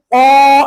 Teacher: kalaulah qof agak ke dalam sedikit